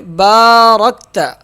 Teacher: بارکت، با کو ایک الف کے برابر کھینچیں گے، را موٹا پڑھیں گے، را کاف آپس میں مل جائیں گے، را کاف زبر رک۔